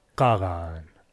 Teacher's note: Comparing them across texts, it doesn't look like they are variants of k or g. They could represent distinct sounds, maybe back-k /q/ and fricative /ɣ/ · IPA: ['qaɣaan]